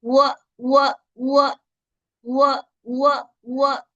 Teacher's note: वाव की अदायगी के लिए होठों को, दोनों होठों को गोल करेंगे। · वाव की जबर को अदा करने के लिए दोनों होठों को गोल करके फिर खोल देंगे।